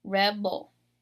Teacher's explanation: So you're stressing the very first syllable, ul. So like the ul kind of comes out kind of weak because I'm putting more power and more emphasis in the beginning of that word